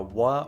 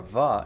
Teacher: The W sound can be pronounced as either a wa or a va in Hawaiian